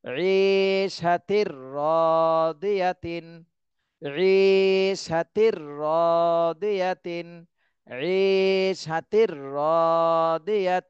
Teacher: তাহলে তানভিনের পরে এই যে ইদগামে বেলাগুনার হরফ আসছে, তাহলে গুন্না ছাড়া মিলাতে হবে। এই তানভিনের সাথে গুন্না ছাড়াই মিলাতে হবে।